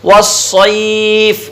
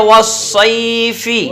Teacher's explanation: یا لین کو بغیر کھینچے بغیر جھٹکا دیے نرمی سے پڑھتے ہیں. پھر فا گیا تو فا کا مخرج بھی آپ کو معلوم ہے اوپر کے دانتوں کا کنارہ نیچے کے یہ ہونٹ سے لگا کر فا ادا ہوتا ہے.